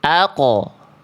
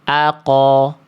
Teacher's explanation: Kalau sukun itu setengah harokat bunyinya. Kalau fathah 1 harokat bunyinya.